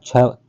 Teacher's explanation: छ जो छतरी वाला है आपके तालव्य से है